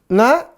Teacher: Na ujung lidah dengan langit-langit Tengah